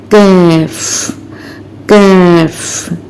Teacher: इसका मखर कफ के मखर से आगे या मु के करीब हो जाता है